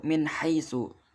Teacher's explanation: dibaca dengan jelas tidak ada dengungnya sama sekali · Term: izhar